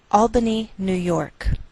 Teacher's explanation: we treat New York as one word and we place more stress on the second part, York. Again, that's Albany, New York.